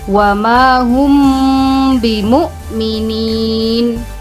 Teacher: Ikhfa syafawi adalah ketika ada huruf mim sukun bertemu dengan huruf ba, hanya huruf ba saja, maka cara membacanya adalah dengan cara samar-samar, mendengung, dan harus ditekan sebanyak 3 harokat